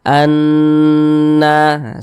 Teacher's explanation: jadi suaranya itu kita tahan kita tahan kita panjangkan sejenak Anna di bagian annya itu kita tahan kita panjangkan sebentar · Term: ghunah musyaddadah